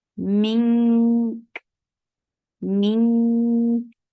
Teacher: First, you are giving ikhfa, and for ikhfa, you are keeping the sound in your nose, and then you are giving hums on kaf because it is with sukoon now because of the waqf.